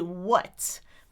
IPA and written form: wʌt (what)